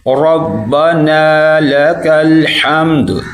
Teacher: را کو موٹا کرنا ہے